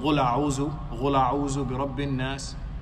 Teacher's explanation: pronouncing the qaf as ghain and then the dal as zay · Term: lahnun jali